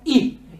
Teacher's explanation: Pero en fusha es algo como I, algo entre la E y la I. No es una I muy fuerte, muy larga, sino I. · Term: kasra corta